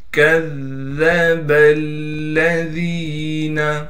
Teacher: دال حروف قلقلہ میں سے ہے، دال ساکن ہو گیا، لہٰذا دال کو قلقلہ کیا جائے گا، یعنی دال میں ہم آواز کو ہلائیں گے۔ کذب الذین، کاف کو ذال سے ملائیں گے اس لیے کہ ذال پر تشدید ہے، ذال پر تشدید ہونے کی وجہ سے تھوڑا ٹھہراؤ رکھیں گے۔